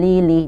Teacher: jadi seakan-akan huruf lam itu double adalah yang sukun terlebih dahulu baru lam yang kasrah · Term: huruf yang bertasydid